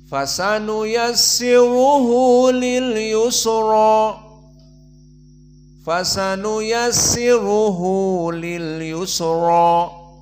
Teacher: Dan begitupun qiraah dari jumhur yang kalian baca, dari qiraah Hafs an Asim, maka di sini dibaca dengan tarkil imalah, maka dibaca dengan fathah dan ra-nya mufakhamah